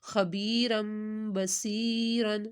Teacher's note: تنوین کے بعد با تو غنہ کیا میم میں